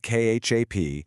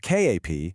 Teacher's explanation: Say it with a high tone and it means to weep. But then you have kap said with a low tone and suddenly it means to be full.